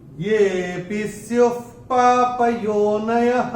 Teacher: दूसरे चरण में य के बाद जो एस दिख रहा है उसको अवग्रह कहते हैं, इसमें विलुप्त अ होता है। तो ये को हम थोड़ा सा खींच के बोलेंगे जिससे कि वो विलुप्त अ निकल के आए, सुनाई पड़े।